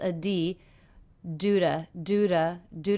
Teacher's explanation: the T here is really more of a flap sound